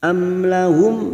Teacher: Am lahum mim sukun lagi bertemu nun idhar safawi, masing-masing mim sukun dibaca jelas.